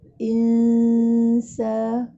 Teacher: Maksudnya dengung nipis. Dengung ifak ni maksudnya kita sembunyikan sebutan nun. Kemudian kita bersedia untuk menyebut huruf sin.